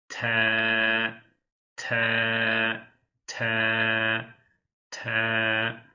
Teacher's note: telaffuzu ise te yani dil ucu ön diş etlerin diplerine değecek şekilde te te. Diğer bir harfimiz harfi.